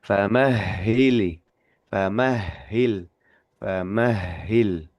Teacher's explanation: Jadi seperti kalau kita anggapnya huruf H ini ee pengucapannya boros nafas. Betul memang boros nafas huruf H ini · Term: ha tasdid